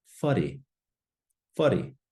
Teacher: So we have our WH creating a f sound. We have an R.